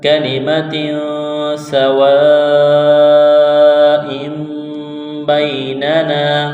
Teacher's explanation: حروف اخفا ہے، غنہ کریں گے، آواز ناک میں چھپائیں گے، سین میں سیٹی کی آواز پیدا کریں گے، سین کو باریک کرنا ہے · لمبی مد ہے، 4 الف کے برابر اس کو کھینچنا ہے، حمزہ کے نیچے دو زیر تنوین ہے، تنوین کے بعد آگے با ہے، تو یہاں پر اقلاب کریں گے، آواز ناک میں چھپائیں گے · تنوین کے بعد سین ہے، حروف اخفا ہے، غنہ کریں گے، آواز ناک میں چھپائیں گے · یہ لمبی مد ہے، 4 الف کے برابر اس کو کھینچنا ہے